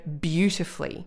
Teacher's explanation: it's not the last syllable that creates the rhyme it's the strong stressed ooh that creates the rhyme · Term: strong stressed syllable